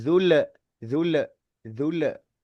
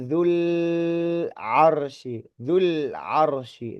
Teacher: padahal huruf lam itu bukan qalqalah gitu loh. Huruf lam itu biasa aja gitu, tidak memantul gitu loh.